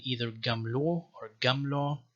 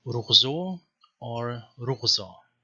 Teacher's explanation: So it's either a stop g or a fricative